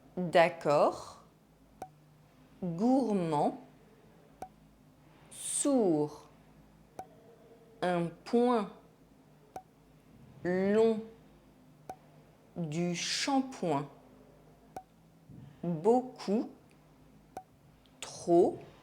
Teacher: These consonants as the final letter of a word are silent in French. D, G, P, S, T, X, and Z. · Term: Silent final consonants